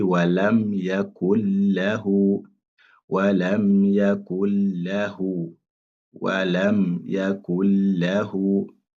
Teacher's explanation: Parce qu'à chaque fois qu'on a la lettre nun qui a le soukoun, si la lettre qui vient après, c'est la lettre lam, donc là, on applique cette règle. on fait ce qu'on appelle idgham bila ghunna. C'est-à-dire, on fait la liaison directement. On appelle ça assimilation.